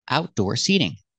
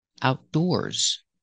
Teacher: end of Outdoors but there's another difference the stress is different when I say outdoor the stress is on the first syllable outdoor seating and when I say Outdoors the stress is on the second syllable outdoors and the difference in use well outdoor is an adjective